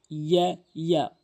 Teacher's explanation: ইয়া হল জিব্বার মাঝখান উপরের তালুর সঙ্গে